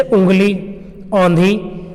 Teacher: अनुनासिक स्वर वो स्वर होते हैं जिनको बोलते समय ध्वनि मुख से तो निकलती है, साथ में कुछ ध्वनि नाक से भी प्रोड्यूस होती है, निकलती है।